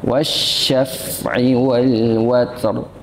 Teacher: Agak susah ya, ra-nya tebal, ta'nya juga hamas.